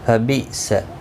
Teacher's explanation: حمزہ ساکن کو جھٹکی کے ساتھ ادا کیا جائے گا